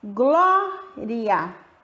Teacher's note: O I é a semivogal, que eu falo com menos intensidade. E o A, vogal, que eu falo com mais intensidade.